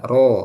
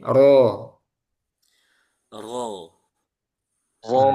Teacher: Ro ini ee dia punya sifat mustahak yaitu tafkhim dan tarqik sesuai keadaannya. Ketika fathah maka dia tebal